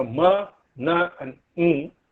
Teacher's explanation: In these sounds, the soft palate is lowered and the air stream escapes through the nasal passage. The oral passage is closed all the time.